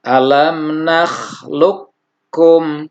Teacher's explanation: Jadi qafnya lebur ke kaf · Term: idgham mutaqaribain